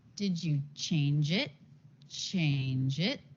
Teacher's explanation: Then a yes/no question. Did you change it? Change it, and the intonation goes up. That's often what happens with a yes/no question.